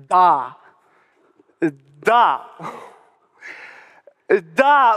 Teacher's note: la consonne d par exemple se prononce en donnant du bout de la langue au-dessus des dents d'en haut